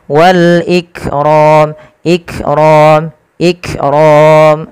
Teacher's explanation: teman-teman bagaimana cara membaca yang benar adalah dia menyesuaikan dengan sifatnya sifat Kaf itu ada sifat namanya E syiddah syidah itu apa tertahannya suara